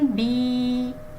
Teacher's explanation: یا مدہ کی پہچان: یا ساکن سے پہلے کسی بھی حرف کے نیچے زیر آ جائے تو اسے یا مدہ کہتے ہیں اور اس کو ایک الف کے برابر کھینچ کر پڑھا جاتا ہے